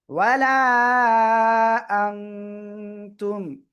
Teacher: ওয়ালা, হামজা নুন জবর আ, নুন সেকেন্ডের পরে ইকফার করতে আসছে, এজন্য নাকের ভিতরে নিয়ে গুন্না করে পড়বো